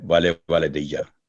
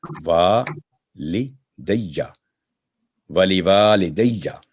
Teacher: आगे यहां भी अमूमी तौर पे गलती होती है, वाले वाले दैया, तो वाले वाले दैया नहीं है, वा ली वा, जो दूसरा वा उसके ऊपर फतह जबर है और आगे अलिफ है, तो 2 सेकंड आवाज लंबी होगी